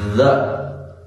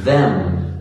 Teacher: When I say a word like the, or them, I can really feel my throat vibrate with the pronunciation. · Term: voiced TH sound